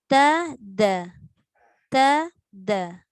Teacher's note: Huruf ta dengan huruf dal. Hujung lidah dekat belakang gigi depan atas.